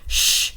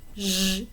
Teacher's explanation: Sh, is the voiceless one, zh is the voiced one.